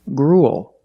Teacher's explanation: with a similar spelling pattern and a similar pronunciation gruel again we see the uel making the long u sound followed by a dark L just like in the words pool and cool